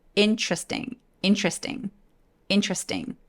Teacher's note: T하고 R 사이에 E를 날려버린 다음에 T하고 R을 한 번에 발음하니까 Ch라고 입술을 내밀어서 소리를 내요